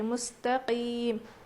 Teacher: اس میں بالکل بھی کھردری آواز نہیں بلکہ صاف آواز آنی چاہیے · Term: قاف